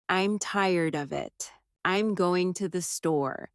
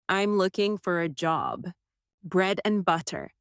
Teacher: Small words like to, of, for and, and often become very soft in casual speech. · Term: weak forms